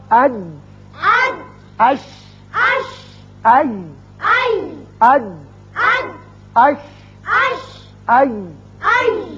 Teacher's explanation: زبان کا درمیانی حصہ جب سامنے والے تالو کے درمیانی حصے سے لگتا ہے چپکتا ہے تو یہ تینوں حروف ادا کیے جاتے ہیں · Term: خلائے دہن کے حروف